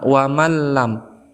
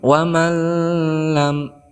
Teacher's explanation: lam ini termasuk huruf idgham bilagunnah maka cara membacanya Nun ini kita tidak baca kita langsung masukkan kepada lam atau di tasdid kan kepada huruf lam wamalam seperti itu kemudian cara membacanya tidak boleh didengungkan seperti wamalam